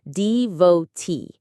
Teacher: The stress is on the last syllable